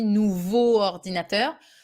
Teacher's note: written exactly like that because if you say a new ordinator we have this double vowel at the end of nouveau and at the beginning of ordinator and we do not do that in french so we go for the l sound an ordinator that works